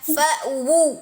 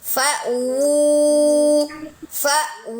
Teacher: Wu-nya bunyi dulu baru sempurna monyongnya dengan jauf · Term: wawnya